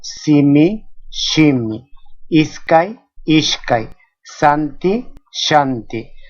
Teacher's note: Esta suena sa, sa. Esta letra en la variante central y en la variante norteña suena en algunos casos como sha.